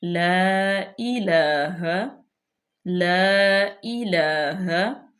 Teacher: مد منفصل، کیونکہ حمزہ نیکسٹ کلمے میں ہے تو یہاں پہ اس کو ہم اڑائی الف تک لمبا کریں گے۔ لا الہ لا الہ، حمزہ کے نیچے زیر، لام پہ کھڑی زبر، تو اس کو ہم لمبا کریں گے۔